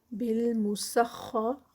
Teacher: بالمسخر خا جو ہے وہ ہیوی ہوگا اور ری جو ہے وہ لائٹ ہوگا